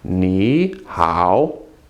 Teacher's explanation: when you have 2 words in a row and they're both third tone, as in here, ni, third tone, hao, third tone, you make the first one a second tone. You change it to second, so actually it becomes ni hao.